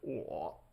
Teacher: it's like low, kind of, we call it the zombie tone, like brains. And there's a little bit of a crackliness to it.